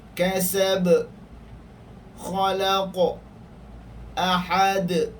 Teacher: Qalqalah yang kedua, qalqalah al-kubra, yakni qalqalah yang berlaku di akhir kalimah. Qalqalah yang berlaku di akhir kalimah, yakni qalqalah yang besar sedikit. Yakni ia berlaku ketika waqaf.